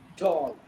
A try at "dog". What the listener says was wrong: भी आप ड बोल रहे हैं. dog होता है dog. D. ढक्कन. ढक्कन. ढ से ढक्कन. ढ से ढक्कन बनाते हैं. जब भी consonant sounds we pronounce in English, there is a lot of puff of air comes out.